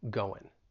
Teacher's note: right and in going i'm really going to drop the g i'm not going to pronounce that ing and say eng i'm just going to say go in